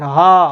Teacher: और अकुह विसर्जनीय नाम कंठ, हा ऐसे बोल रहे हैं तो देखिए, हा बोलने पर कंठ से हवा निकल रही, कंठ से ध्वनियाँ उत्पन्न हो रही है, तो इसका उच्चारण स्थान हो जाएगा कंठ।